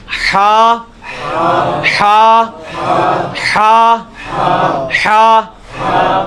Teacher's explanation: یہ وسط حلق سے یعنی حلق کے درمیان سے نکلتا ہے. یہ کبھی آپ وہ گلے والی ٹافی کھائیں نا, وہ والی آواز ایکزیکٹ بالکل کلیئر وہاں سے جو نکلتی ہے نا, یہ ہا کا مخرج وہی ہے. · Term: حلوائی والا جو ہا